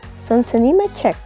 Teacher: We pronounce 의 as 에 when it is a possessive marker.